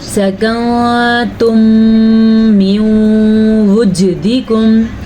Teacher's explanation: میم ساکن کے بعد پھر میم آ گیا ہے تو یہاں پہ بھی غننے کی کیفیت پیدا ہو رہی ہے۔ اس قاعدے کو ادغام شفوی کہتے ہیں۔